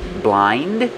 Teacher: You don't really hear the D